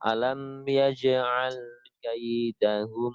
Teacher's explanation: lam sukunnya tidak boleh tertahan. Jadi tetap ya cenderungnya hampir mengalir, cuman tidak terlalu mengalir.